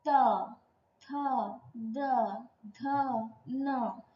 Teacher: त थ द ध न दंत में आ रहा है जी्हा। दंत में लग रहा है। इसीलिए पांच वर्णों को दंत वर्ण कहते हैं। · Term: दंत्य वर्ण